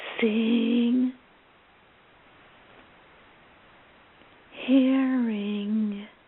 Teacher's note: I sound like I'm breathy and spacing out.